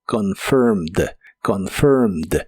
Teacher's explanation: Es un verbo regular, así que es similar a la forma del presente, pero el final termina con ed y solo se pronuncia la d